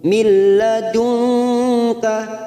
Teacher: nun sukun bertemu lam, idgham bila guna, hanya masuk tanpa mendengung.